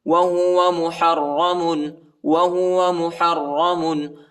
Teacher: محرم، وہو محرم، حا کو را کے ساتھ ملائیں گے، اور را کو موٹا پڑھیں گے اور شدت کے ساتھ پڑھیں گے